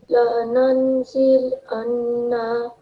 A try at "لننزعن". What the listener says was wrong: Put a little bit more stress on the noon. Lananzi'anna.